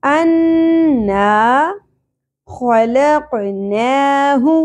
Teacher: خو میں خراش کا ایلیمنٹ ہوگا، کھردرا حرف ہے خو، ٹھیک ہے، زبر زیادہ نہیں کھینچی جائے گی۔